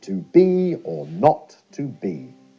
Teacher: the first syllable is unstressed the second is stressed